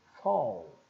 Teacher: nós temos o som de f o aberto e l